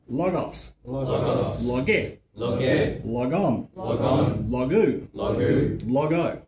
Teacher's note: I'm emphasizing the last syllable more than I should because the accent's on the first syllable but I'm trying to